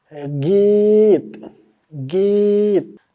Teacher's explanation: We lengthen the sound of ye. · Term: yae maruf